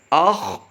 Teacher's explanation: خا حروف مستعلیہ سے ہوتا ہے، اس کو ہم نے پر کر کے پڑھنا ہوتا ہے